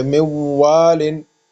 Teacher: نون کے بعد واو آیا ہے، اس وجہ سے تو نون واو میں کنورٹ ہو گیا ہے